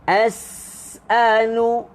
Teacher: Kalau huruf sin tu berbaris, dia ada juga siulan dia tapi kurang kedengaran. Tapi bila sin tu mati, siulannya, desirannya lebih kedengaran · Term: siulan bagi huruf sin